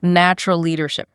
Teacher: The stress is heavily on the first syllable of natural and leadership.